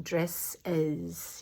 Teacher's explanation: we have what's called an allomorph, which is is. We add a vowel and then we put the s or z at the end.